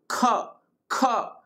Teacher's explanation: और यहां तक कि एक ह की आवाज भी आती है। जब ख बोलते हैं ना जब हवा ज्यादा लगती है तो ह की आवाज आती है। · जब ख बोलते हैं तो हवा ज्यादा लगती है तो ह की आवाज आती है ना, ह की ध्वनि भी सुनाई देती है। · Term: महाप्राण